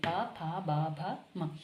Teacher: प में हमारे होंठ जो हो रहे हैं आपस में मिल रहे हैं। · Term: ओष्ठ